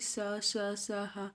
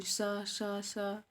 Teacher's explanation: श्वास मुख से रगड़ खाती हुई तीव्र गति से बाहर निकलती है, जिससे ऊष्मा उत्पन्न होती है, इसलिए इसे ऊष्म व्यंजन कहते हैं और इनकी संख्या 4 है।